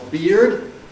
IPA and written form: biːrd (beard)